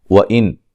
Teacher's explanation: نون ساکن کا اظہار ہے، غنہ نہیں کریں گے